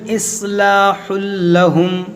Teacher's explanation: ادغام کریں گے، تنوین کے بعد لام ہے اور بغیر غنہ کے